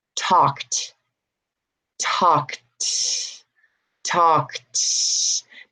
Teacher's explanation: Do you hear the last sound? It's not a D, it's a T